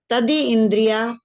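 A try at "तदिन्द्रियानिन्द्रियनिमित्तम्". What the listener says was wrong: तदी इंद्रिया भी नहीं है, तदींद्रिया। तदींद्रिया, तदींद्रिया।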